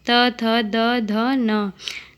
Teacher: त, थ, द, ध, न दंत्य से उच्चारित वर्ण।